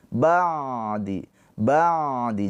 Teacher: Ain itu tawassud. Ain ada aliran suaranya sedikit.